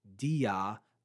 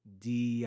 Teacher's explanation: the alpha has been dropped from pronunciation and marked with an apostrophe because the next word starts with the a sound